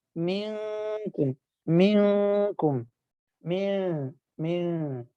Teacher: ٹھیک ہے، اب مینکم میں جب آپ نے پڑھنا نون کو تو زبان کے کنارے کو ہلکا سا لگائیں دانتوں کی جڑ پہ کے ساتھ، اور نون کی آواز کو ناک میں چھپائیں اور غنہ کریں. یہ ہوگا مینکم مینکم مین.